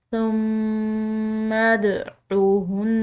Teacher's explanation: اس کو مخفی کر کے پڑھنا ہے، ثم ادعوہن، میم مشدد ہے، اس پر غنہ کریں گے